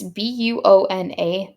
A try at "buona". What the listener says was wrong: You had a W in the beginning of that one, lady.